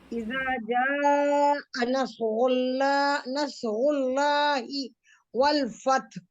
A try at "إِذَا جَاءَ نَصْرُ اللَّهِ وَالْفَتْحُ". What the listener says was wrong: आपने अच्छी कोशिश की है, लेकिन ब्रेक्स आए आपके, बहुत बीच बीच में स्टॉपेजेस थे, वहाँ रुकना नहीं। आयत को कोशिश करें कि एक ही बार में पढ़ें, है ना।